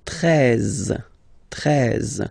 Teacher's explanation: if you combine this E and E, you get the sound E, really open.